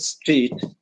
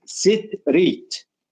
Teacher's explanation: So in this case, when it comes to our students, they always try to insert a vowel. They insert a vowel between these sequences of consonants. So to give an example, for example, the word street, they do not pronounce it street, they pronounce it sit-reet.